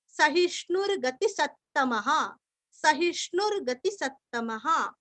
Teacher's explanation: स के ऊपर आघात दो त का उच्चारण अच्छे से करना